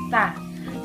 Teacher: Jadi huruf ta itu dibacanya berbisik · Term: mahmusan